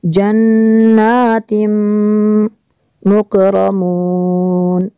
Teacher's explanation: تنوین کے بعد میم ہے حروف معلوم میں سے، یہاں پہ ادغام ہوگا اس لیے یہاں پہ غنہ کریں گے